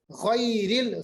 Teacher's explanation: غین کا مخرج ادنائی حلق